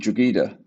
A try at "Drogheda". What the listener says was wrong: That is Drogheda. So it's a silent G. Drogheda. Drogheda.